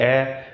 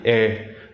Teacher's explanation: a slight tendency for Vietnamese people to make their mouth a little bit wider when they're making the E without the hat